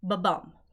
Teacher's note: the specific pattern of an unaccented and short syllable, followed by a long and accented syllable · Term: iamb